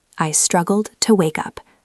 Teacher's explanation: Notice how I stress the word struggled. It carries the emotion.